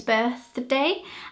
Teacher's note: the th sound your tongue goes in between your teeth and your mouth is quite closed